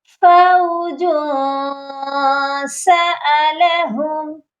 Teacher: یہاں پر جیم کے اوپر ہم نے اخفا کرنا ہے، سافٹ غنہ کرنا ہے